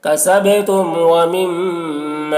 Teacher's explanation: کسبتم ومما، دیکھیے میم مشدد ہے، میم میں غنہ ہوگا